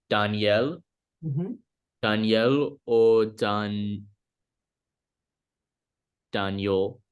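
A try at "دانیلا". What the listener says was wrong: It's a la. It is just le and aleph, right? Daniela, Daniela.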